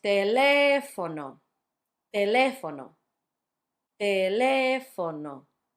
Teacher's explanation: Notice it's on the third to last syllable.